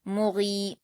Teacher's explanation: فل، میم پر حرکت جلد پڑھیں گے، غین پر یا مدہ ہے 2 حرکات کھینچ کر پڑھیں گے